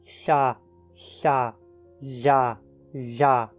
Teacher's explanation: tocamos a ponta da língua na crista alveolar e apertamos os lados dela em direção aos dentes laterais, mas deixando o ar escapar por ali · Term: fricativas laterais alveolares